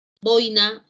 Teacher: Boina, acento en la penúltima sílaba, la palabra es grave.